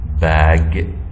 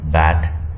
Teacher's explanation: the shortening effect of p, t, k, and it's called pre-fortis clipping